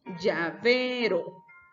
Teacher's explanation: Llavero tiene su mayor fuerza de voz en V, que es la penúltima sílaba